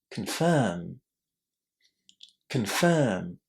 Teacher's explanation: Can you hear how quick, how fast this first syllable is? It's kn.